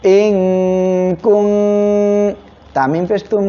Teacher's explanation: ইকফা গন্না নুন সাকিনের পরে ইকফার তা আসছে